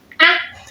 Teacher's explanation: The first sound, which is very short in pronunciation or in production, is it's realized by spreading your lips, your tongue well relaxed, in your mouth. So here you spread your lips, you widen your lips to produce the sound, short sound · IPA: /ɑ/